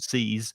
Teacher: So seize with the Z, there is vibration.